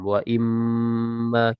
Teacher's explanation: tidak tulis sambung bukan wa imma tapi waain dan ma ya Nun sukunnya idgham ke huruf mim